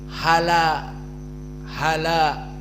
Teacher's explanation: dihilangkan hamzahnya lalu Fathah di dalam Hamzah dipindahkan ke lam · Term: annaql